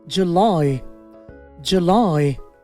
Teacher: এবার লাইতে জোর হবে জুলাই